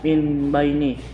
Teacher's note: Ayat ke-7. Min baini Iqlab karena ada huruf non mati atau tanwin bertemu dengan huruf ba. Cara membacanya mendongong membentuk huruf M.